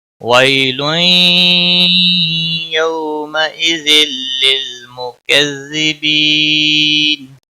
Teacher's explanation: ویل تنوین وی یالین ہے، تھوڑا نرمی کے ساتھ کھینچ کر ادا کریں گے. تنوین کے بعد حروف یرملون کا یا ہے، ادغام باگنہ ہوگا